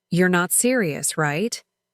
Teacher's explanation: Her voice started high on you're, dropped down on not serious, and then shot back up on right?